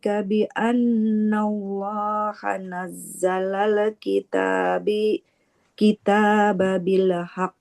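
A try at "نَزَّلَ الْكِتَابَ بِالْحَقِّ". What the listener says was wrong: Hanya tadi lam sukunnya enggak boleh memantul.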